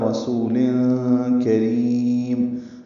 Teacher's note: سین سیٹی جیسی صفیر کی آواز سے، باریک پتلی آواز سے پڑھا جائے گا · را باریک ہے، را کو لمبا کریں گے